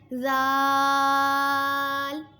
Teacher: بہت نرمی سے زبان کا سرا اور اوپر کے دانتوں کے اندرونی کنارے سے ادا ہوتے ہیں۔